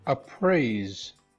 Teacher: Now the R is an approximant, it receives 5 based on the sonority scale.